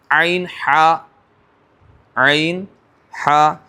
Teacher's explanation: درمیان حلق سے عین اور ہا ہے نا، مہملہ، یعنی کہ اس پہ کوئی نقطہ نہیں ہوتا، اسے کہتے ہیں مہملہ۔